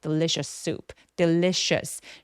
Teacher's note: delicious 할 때 강세가 부각되게 느껴지려면 첫 번째 음절인 the 부분을 조금 힘 빼고 소리 내주시면 되겠습니다